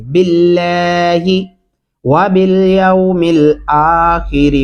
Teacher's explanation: यहाँ पे बिल्लाह मोटा नहीं पड़ेगी